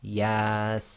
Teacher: no vowel sound, so we know it will be too long. And the second one is the sin with madda, so that's going to be 6 long. So when you hear it recited, they'll go Yasin.